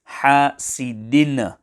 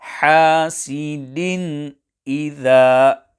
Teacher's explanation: the correct pronunciation will be hasidin idha, without qalqalah on din